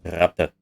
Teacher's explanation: These are both alveolar consonants, so the tongue is at the ridge behind the teeth. But in the case of a rat, it is a trill, so the tip of the tongue vibrates.